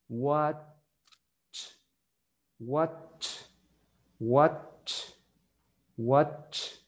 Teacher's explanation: antes que usted haga ese sonido de T, usted se detiene y después dice ch.